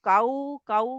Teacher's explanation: काऊ के लिए आपके होंठ गोल होने हैं